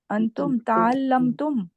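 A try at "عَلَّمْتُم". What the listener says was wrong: Allamtum. Good job.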